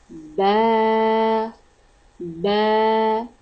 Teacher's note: The letter Ba pronounced by closing two lips from the wet part of the lips.